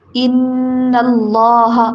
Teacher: اللہ کا نام موٹا کر کے پڑھنا ہے